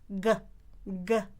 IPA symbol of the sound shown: g